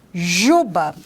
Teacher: é uma consoante fricativa palatal alveolar vozeada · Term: fricativa palato-alveolar vozeada